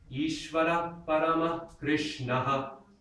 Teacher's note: You can do it under limited circumstances. When the visarga, when that H dot shows up at the end of a line, you can do an echo.